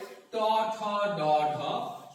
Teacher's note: পশ্চাৎ দন্তমূল এবং জিহ্বার ডগা সংস্পর্শে যে ধ্বনিগুলো উচ্চারিত হয় তাকে মূর্ধন্য ধ্বনি বলে